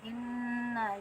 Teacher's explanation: kita cara bacanya ditekan dulu karena ada tasdid, kemudian didengungkan, didengungkan sampai rongga hidung ya. Nah, lama dengungannya bisa 2 harokat atau lebih, seperti tuh. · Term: nun guna